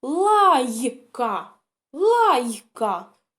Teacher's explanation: лайка у нас є л тверда й у нас завжди буде м'яка і так к тверда Значить ми записуємо в третій стовпчик слово